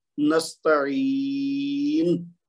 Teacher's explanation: نون کے اوپر پیش ہے وہ گر جائے گی یہاں اگر رکیں گے